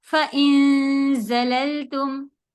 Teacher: زا کا buzzing sound کے ساتھ ہوگا